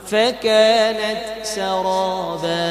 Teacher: وسيرت الجبال فكانت سرابا তা এটা হামস হবে সেকেন্ড সুকুন অবস্থায় সাকিন অবস্থায় তা হামস হবে ফাকানাত এভাবে হবে বেশিও না কমও না হালকা আওয়াজ খেয়াল করতে